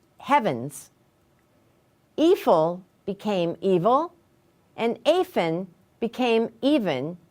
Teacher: the /f/ sound in Old English, became the /v/ sound in Modern English. But the change only occurred if the /f/ is between two vowels.